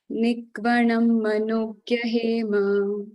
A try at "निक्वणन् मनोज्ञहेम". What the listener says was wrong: Nikvanan, okay, not Nikvanam. Nikvanan Manogya Hema